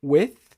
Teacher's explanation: Tem um som sem som nenhum, só com arzinho saindo, with, e também tem um som com bastante ar saindo, né, com a vibração das cordas vocais.